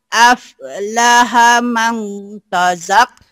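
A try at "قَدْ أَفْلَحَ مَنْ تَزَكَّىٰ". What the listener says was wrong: Qad aflaha man tazakka. Jangan ada o-nya di sini, Mak.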